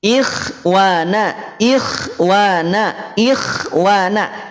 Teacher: termasuk tebal tapi ketebalannya berkurang ingat ingat ingat bukan jadi tipis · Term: tafkhim nisbi